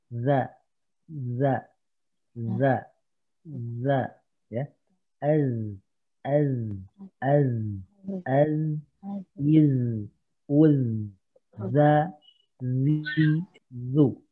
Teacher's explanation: Ini ujung lidah dengan ujung gigi seri atas sama. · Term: huruf za